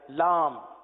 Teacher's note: لام کے بعد جو میم آتی ہے نا اس کو آپ ملا لیں، ہونٹوں کو ملا لیں آپ